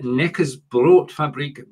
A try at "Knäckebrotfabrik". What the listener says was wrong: So you do need to pronounce the K as well. It's not a silent K like in English. Knäckebrotfabrik Barilla Wasser Deutschland GmbH.